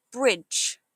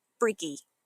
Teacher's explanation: Watch for the dj sound at the end. It sounds like a J, so it's bridge, not briggy.